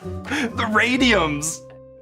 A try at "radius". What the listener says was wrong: Radius. Did you just say radiums?